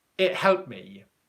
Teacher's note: What you'll probably hear is, it helped me, okay? So it's going to sound just like the ED ending isn't there